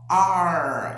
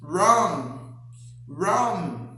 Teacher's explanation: A letra R em inglês ela é conhecida como R em corda ou R caipira, alveolar. Você tem que dar uma dobrada na língua para cima para falar assim, ó, R. E diferentemente do H, que tem som de R glotal que sai daqui na palavra, por exemplo, house, ele tem que ser pronunciado com som para cima, R.